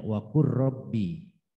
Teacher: tulisannya waqul, tapi cara membacanya waqur rabbi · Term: idgham mutaqarribain